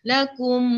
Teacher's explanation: Kapit bibir. Lakum tapi sambil hadirkan bunyi dengung. Dengung daripada hidung. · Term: idgham mithlaini syafawi